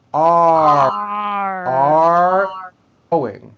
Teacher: The first word are has a strong R sound at the end.